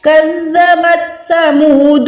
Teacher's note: زبان کو ہم نے اوپر والے دانتوں سے ٹچ کرنا ہے, تھوڑی سی ٹپ کو باہر نکالنا ہے تاکہ یہ سافٹلی ادا ہو